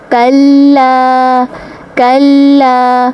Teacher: کاف کو باریکی سے ادا کرنا ہے، لام کے ساتھ ملانا ہے، لام کے اوپر تشدید ہے، اس کو 2 بار پڑھا جائے گا، اور ساتھ میں الف خالی، پچھلے حرف کے پر زبر، الف مدہ کا قاعدہ بھی ہوگا، 1 الف کے برابر کھینچیں گے۔